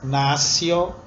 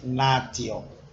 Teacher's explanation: Há também o encontro entre a consoante T e a vogal I, que em muitas palavras, como nascio, tem essa pronúncia sibilante em vez de natio.